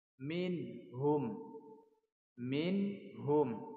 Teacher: Tidak ada dengung dan tidak ada samar. Bacanya harus jelas.